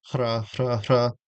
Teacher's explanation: It's just kind of like it just feels like an H and a tap together. Hra, hra, hra.